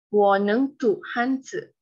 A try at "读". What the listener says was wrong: Please improve your 读. 读 is second tone. Pull up. 读.